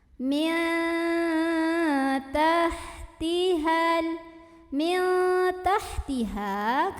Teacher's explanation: ikhfa aqrob karena ada nun sukun yang bertemu dengan huruf Ta Maka cara bacaan nun sukun nya samar-samar